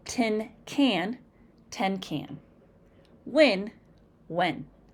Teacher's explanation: Speakers of African American English tend to interchange the short I sound and the short E sound.